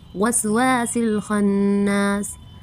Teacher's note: الف ساکن سے پہلے زبر آیا ہے اس لیے الف مدہ ہوگا، اس کو بھی ایک الف کے برابر کھینچیں گے۔ باقی تمام حرکات کا ساؤنڈ شارٹ ہوتا ہے اس لیے ہم ان کو جلدی سے ادا کریں گے۔